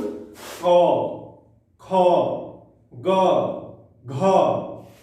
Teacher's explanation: क वर्ग में है तो उकर उच्चारण कंठ से होते हैं। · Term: कंठ से उच्चारण